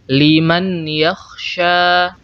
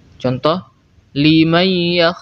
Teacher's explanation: kita tidak boleh membaca nun sukun seperti ini Liman yakya atau membuang nun sukun sepenuhnya tanpa memberikan sifat Gun contohakya nah ini juga keliru yang benar kita harus memanjangkan gunah